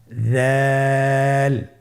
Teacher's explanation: দালের মাখরাজ হলো জিহ্বার আগা সামনের উপরের 2 দাঁতের আগার সঙ্গে লাগিয়ে উচ্চারিত হয়